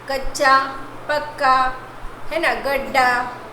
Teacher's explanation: और समान व्यंजन ध्वनि से जुड़ती है, एक ध्वनि व्यंजन ध्वनि एक समान व्यंजन ध्वनि से जुड़ती है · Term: द्वित्व व्यंजन